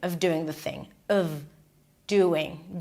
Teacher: Doing is somewhat stressed, of is reduced, of doing the thing. Stick the tongue out for the TH and connect those 2 words together.